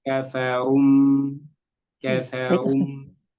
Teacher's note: Ee kemudian kalau apa ro tebal tadi bertemu mim kan? Kafaru runya tebal, mimnya tipis.